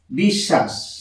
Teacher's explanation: এই বটা অন্তস্থ ব এর কোন উচ্চারণ হচ্ছে না